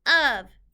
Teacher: These 2 letters are not making its real sounds. The O in this word is making a short U sound, and the F is making a V sound, of. This entire word you just need to remember by heart.